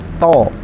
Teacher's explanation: ujung lidah kita menempel ke pangkal gigi seri atas atau dekat gusi itu, ya. To, tapi ditebalkan atau dikeluarkan tebalan, dibulatkan. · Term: huruf to